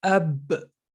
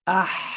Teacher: the sound for ba stops right there versus let's say ah the sounds keep going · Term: shidda